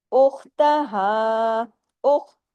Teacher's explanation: उख जमाओ के साथ और ख को हैवी करना है